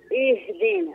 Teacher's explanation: ذيك همزة الوصل حدا يبدأ بها يقراها مكسورة.